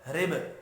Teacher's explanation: रिब, रा को ज़ेर की वजह से बारीक पढ़ेंगे, बा साकिन पर कलकला करना है